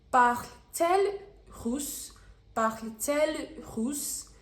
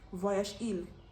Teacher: Now, if the third person singular of a verb ends with a vowel, you're going to add a T in the inverted method to facilitate the pronunciation, to make speaking smoother.